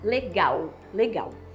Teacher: grande maioria dos estados brasileiros a gente vai falar legal legal a gente transforma o l final em um U